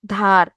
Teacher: এই উদ্ধার থেকে উ ধ্বনিটা বিলুপ্ত হয়ে ধীরে ধীরে কি হয়ে গেছে? ধার হয়ে গেছে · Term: আদি স্বরলোপ